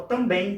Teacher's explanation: a sílaba mais forte é a última, então também recebe acento, tá?